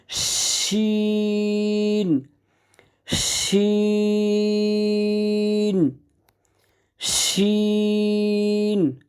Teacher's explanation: জিহ্বার মাঝখানটা উপরের তালুর সাথে লাগিয়ে বাতাস সহকারে শীষ দিয়ে উচ্চারণ হবে